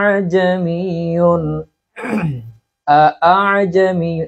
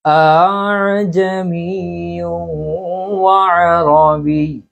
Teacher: প্রথম হামজা ঠিকমতো উচ্চারণ হবে, দ্বিতীয় হামজা পুরোপুরি উচ্চারণ হবে না, অর্ধেকের মতো উচ্চারণ হবে। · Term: তাসহিল